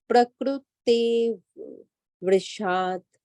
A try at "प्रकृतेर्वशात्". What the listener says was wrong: वर्षात नहीं ना, प्रकृतेर तेर, तेरा मेरा तेर, प्रकृतेर्वशात्। ते के बाद रफार वाला र बोलना, जो कि आधा है। प्रकृतेर्वशात्। त्रे नहीं ना आएगा, मतलब तेर, तेरा हम तेरा में कैसे बोलते हैं? त ए र आ, तेरा, है ना? तेर, तेर वशात। तेरा में र पूरा होता है, यहाँ पे जो रफार वाला र है वो आता है।